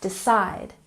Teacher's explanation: And next we have decide. Stress the second syllable.